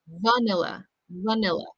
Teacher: so that final vowel sound will be the schwa sound, vanilla, vanilla.